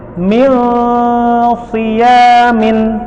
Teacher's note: lidah kita menggantung bersiap menyebut huruf so, tetapi ditekan ke rongga hidung menjadikan gunnah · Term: ikhfa hakiki